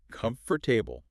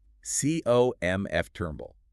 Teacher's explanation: It condenses from 4 beats down to 3, and that whole middle of the word is drastically altered.